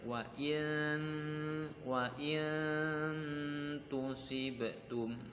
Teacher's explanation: Ketika melafatkan nun tersebut, bentuk mulut kita sudah menyerupai atau ke makhraj taknya. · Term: ikhfa